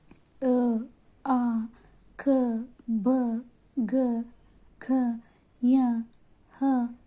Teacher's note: ಕಂಟಕ್ಷರಗಳು ಅಂದರೆ ಕಂಠದಿಂದ ಹುಟ್ಟುವಂತ ಅಕ್ಷರಗಳು ಕೊರಳಿನಿಂದ ಹುಟ್ಟುವಂತ ಅಕ್ಷರಗಳು ಅ ಆ ಕ ಖ ಯ ಹ ವಿಸರ್ಗ ಇವೆಲ್ಲ ಅಕ್ಷರಗಳು ಕಂಠದಿಂದ ಉಚ್ಚರಿಸಲ್ಪಡಂತವುಗಳಿಗೆ